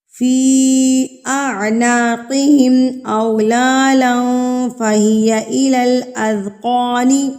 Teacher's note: قاف کو ہم پر کر کے پڑھیں گے کیونکہ قاف حروف مستعلیہ میں سے یعنی کہ موٹے حروف میں سے ہے، تو اس کو ہم پر کر کے یعنی کہ تھوڑا سا منہ کو گول کر کے اس کی ادائیگی کریں گے